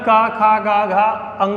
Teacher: कहाँ से होता है, कंठ मतलब इस गले से। मतलब का, खा, गा, घा अंगा बोलेंगे तो यहाँ पर क्या गले का प्रयोग होगा, गले से आवाज आएगी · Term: कंठ व्यंजन